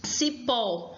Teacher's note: é uma oxítona, possui a última sílaba forte e é acentuada porque termina em O.